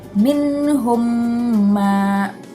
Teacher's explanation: Cara membacanya adalah dengan mengatupkan bibir dan diberi sedikit dengung. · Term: idgham mimi